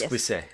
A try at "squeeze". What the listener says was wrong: No. Did you just pronounce an English word with a French pronunciation?